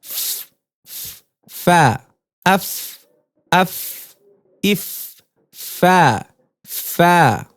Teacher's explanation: নিচের ঠোঁটের পেট সামনের উপরের দুই দাঁতের আগার সঙ্গে লাগিয়ে উচ্চারিত হয়